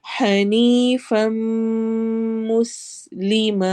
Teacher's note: फम इदगाम हो रहा है, गुन्ना करना है, नाक में आवाज ठहरेगी और लंबा करना है